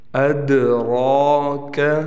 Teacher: را کو ہم موٹا بھی پڑھیں گے اور را پر کڑا زبر ہے، موٹا پڑھنے کے ساتھ اس کو 1 الف کے برابر کھینچیں گے بھی، کڑا زبر ہونے کی وجہ سے۔